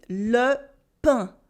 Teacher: there is no extra N sound in le pain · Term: French nasal vowels